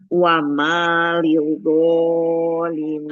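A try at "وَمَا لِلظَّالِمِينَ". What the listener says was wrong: Lidho. Zo-nya kurang tekan Ibu. Nanti seperti nggak bertasydid ya. Jangan lidho. Lidzolimina. Kemudian ini lidzolimina, jangan terlalu lemah penekanannya. Nanti dia seperti nggak bertasydid ya.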